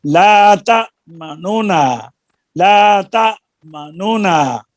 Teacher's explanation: पहली नून की पेश जो है जम्मा, इसको तीसरा हिस्सा ज़ाहिर करके यहाँ पर रौम करेंगे